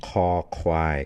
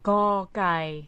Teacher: It's got aspiration. The throat is open and you've got this air puffing over.